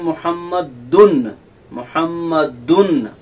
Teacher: محسوس کیجئے کہ ناک میں آواز جا رہی ہے تنوین کی